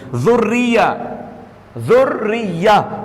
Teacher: تو اب یہ را مشدد ہے. را مشدد کے نیچے زیر ہے تو را کو موٹا پڑھیں گے کہ باریک؟ باریک پڑھیں گے اپنی حرکت کے مطابق.